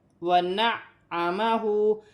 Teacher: وَنَعَّمَهُ، عین کو اپنے مخرج سے بھی ادا کیا جائے گا اور جمع اور سختی کے ساتھ بھی کیونکہ مشدد ہے عین، اور ہا پر الٹی پیش ہے، اسے ایک الف کی مقدار کھینچ کر پڑھا جائے گا۔